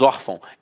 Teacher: Então a sílaba tônica está na penúltima e é acentuada.